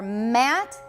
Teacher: we've got the lips together when we've got voicing. And the soft palate is lowered.